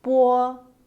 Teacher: When these initials are combined with o, there is actually a short u sound in between.